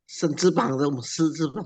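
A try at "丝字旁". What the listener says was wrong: bukan sen, bukan. Bacanya si itu.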